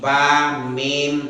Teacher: Yang pertama tempat keluar di bibir namanya disebut syafatani. 2 bibir syafatan.